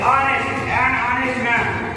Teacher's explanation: అంటే H వచ్చేసి సైలెంట్ అవుతుంది. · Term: silent letter of H